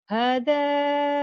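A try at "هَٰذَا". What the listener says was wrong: Hanya panjang. Hada.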